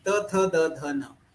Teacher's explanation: उसके बाद त वर्गीय व्यंजन, त थ द ध न, ये उच्चारण स्थान दंत है। अगर हम त थ द ध न इसका उच्चारण करना शुरू किया तो हमारी जिह्वा जो है वो दंत के ऊपर स्पर्श करती है, अगर दंत का जिह्वा से स्पर्श नहीं हो गया तो हम त थ द ध न ये वर्णों का उच्चारण नहीं कर सकते।